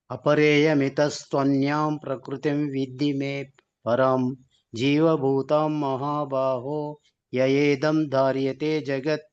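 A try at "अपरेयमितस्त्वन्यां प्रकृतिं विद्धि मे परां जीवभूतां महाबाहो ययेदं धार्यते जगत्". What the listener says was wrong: హరి హరి బోల్. Correct పలికిండ్రు అక్కడ.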